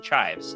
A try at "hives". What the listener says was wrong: you put on the under potato. No C. Hives.